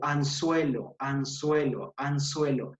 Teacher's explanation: es un sonido interdental